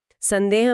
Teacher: संदेह में बिंदी के बाद द है तो वो न की आवाज देती है